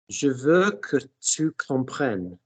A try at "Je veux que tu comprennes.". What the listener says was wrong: The vowels are in place, but don't give me fum fum fum fum fum fum.